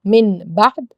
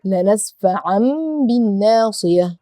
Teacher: So again, if you see noon, sakin or tanween followed by ba, you will not pronounce the noon, you will produce sound of meme and make ghunna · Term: iqlab